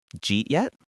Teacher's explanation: He asked, did you eat yet? He used the J sound for did you and smashed it into eat.